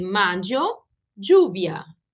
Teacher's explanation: em algumas regiões, os dois L's vão ser pronunciados como um som do Y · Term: yeísmo